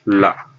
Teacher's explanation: इसमें मुख द्वार बीच में बंद हो जाता है और हवा दोनों मुख के किनारों से निकल जाती है। यानी ऐसे मुख है तो मुख द्वार बीच में बंद हो जाता है, ये बीच में बंद हो जाता है और किनारों से वायु बाहर निकल जाती है। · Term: पार्श्विक व्यंजन